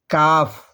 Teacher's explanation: کاف جڑ زبان تالو سے مل کر ذرا منہ کے جانب ہٹا کر کاف ادا ہوتا ہے